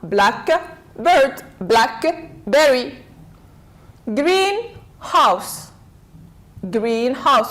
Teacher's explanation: compound nouns stress falls on the first part